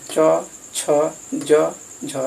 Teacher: च, छ, ज, झ, इसका उच्चारण स्थान तालु है